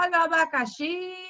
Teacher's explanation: perceba que o xi, ele teve mais tonicidade, ele teve mais força, intensidade ali quando ele falou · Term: sílaba tônica